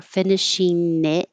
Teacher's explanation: So the connections finishing it on, finishing. So instead of ing with the ing, the tongue high in the back, I'm changing it to in with the tongue high in the front so it can connect easier.